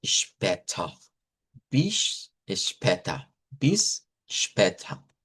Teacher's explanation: la A con la diéresis es la E abierta